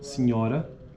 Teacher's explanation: a pronúncia fechada da vogal tônica posterior da palavra senhora